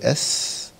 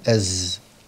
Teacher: طب لو عملت استعلاء هتبقى صاد أص أس أص. طيب نفس السين دي لكن هعمل استفال مع جهر، بقت زاي، بدول أس، أحط بقى جهر صوت يعني أز.